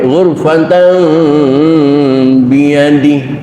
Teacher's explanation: Iklab itu tidak menekankan 100% kepada huruf ba sehingga timbul suara mim 100%